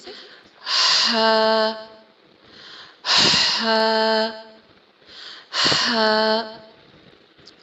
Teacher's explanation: حلق کے بالکل درمیان میں سے، مڈل میں سے اس کی آواز نکلتی ہے. رگڑ کھا کے آواز اس کی نکلتی ہے اور منہ سے باہر کی طرف اس کو ہم آواز کو پھر تھرو کر دیتے ہیں، پھینک دیتے ہیں.